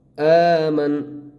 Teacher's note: اس کے اندر ہم میم کو نون کے ساتھ ملائیں گے، نون کے اوپر جو زبر ہے یہ ختم ہو جائے گی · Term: وقف